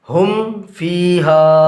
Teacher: मीम साकिन के बाद फ़ा आ रहा है, लिहाजा मीम साकिन को ज़ाहिर करके पढ़ेंगे।